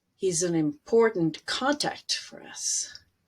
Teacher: you have this alternating between longer stronger words and short less focused on words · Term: sentence stress